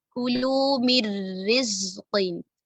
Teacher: हम नून साकिना को रा के साथ मर्ज तो कर रहे हैं, लेकिन हम इधर गुन्ना नहीं कर रहे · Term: इदगाम बी गैरि गुन्ना